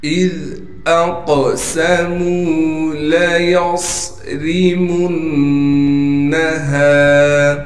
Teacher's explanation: کو صاد سے ملائیں گے اس لیے کہ صاد ساکن ہے، صاد کو موٹا بھی کرنا ہے، صاد میں سیٹی بھی ادا کرنی ہے · میم کو نون سے ملائیں گے اس لیے کہ نون پر تشدید ہے اور نون پر تشدید ہونے کی وجہ سے غنہ بھی کیا جائے گا